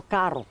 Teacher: por aqui o r fica bem mais fraco